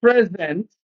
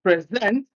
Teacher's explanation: stress the first syllable when it is an adjective, stress the second syllable when it is a verb